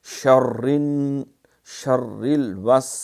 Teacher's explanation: شین میں تفشی ہوتی ہے، پھیلاؤ ہوتا ہے، ششکار ہوتی ہے